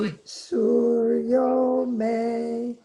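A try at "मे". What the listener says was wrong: me goes down a little bit more. Suryo me.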